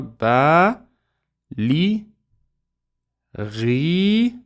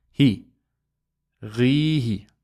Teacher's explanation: Don't forget the ya makes the kasra longer.